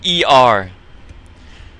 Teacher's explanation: it kind of sounds like r e r in sister but it's really being pronounced deeper in the throat